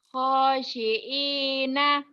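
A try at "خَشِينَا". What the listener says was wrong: Kamu lupa terus tuh. Itu ada titiknya. Bukan hosiin tapi hodi di do. Khadi'ina.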